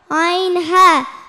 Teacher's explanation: Ain ha, sound produced from the middle of the throat.